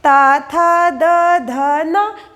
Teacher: त थ द ध न इसका उच्चारण स्थान दंत है।